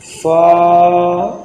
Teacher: جب اوپر کے دانتوں کا اندرونی کنارہ نچلے ہونٹ کے تار حصے سے ملے گا اس وقت فا ادا ہوگا۔ اس سے مقدار بھی 2 الف ہے، فا، اس طرح۔